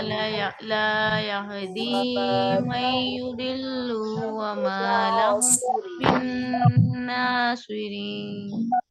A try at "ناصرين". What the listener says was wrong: जब आप सौत को पढ़ेंगी तो ना सोई रीन नहीं कहना है, यानी कि आपने उस सौत को पूर करने की कोशिश में अपने लिप्स को राउंड किया है।